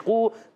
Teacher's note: تقولو تا پر زبر قاف واو پیش قو، قاف حروف مستعلیہ میں سے موٹا ادا کریں گے، قاف کا مخرج زبان کی جڑ تالو کا نرم حصہ